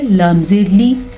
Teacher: لام کو پھر سے لمبا نہیں کریں گے، لام کے نیچے زیر ہے اور زیر کی مقدار انتہائی قلیل ہوتی ہے. لام زیر لی، اس سے زیادہ نہیں کر سکتے.